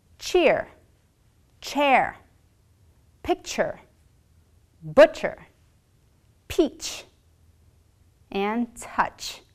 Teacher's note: This sound is quick and it sounds like if you sneezed. You will bring the tip of the body of your tongue to the roof of your mouth and blow air in a quick burst. Your vocal folds will not vibrate.